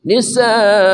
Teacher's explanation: sa mad wajib muttasil 4 harakat panjang